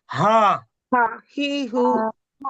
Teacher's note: হাহি একবারে বুক থেকে, বুকের মধ্য থেকে